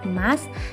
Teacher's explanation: fonem E, alfonnya E tengah atas depan tak bundar. Grafemnya tetap E.